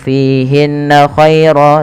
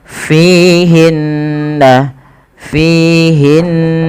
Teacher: berharakat tasdid hukum gunah merupakan Tingkatan tertinggi dalam bacaan gunah yaitu ketika ada Nun tasdid atau mim tasdid maka cara membacanya menahan kedua-duanya atau menahan bunyi Nya maka tidak langsung fihinnair tapi tahan dulu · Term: gunnah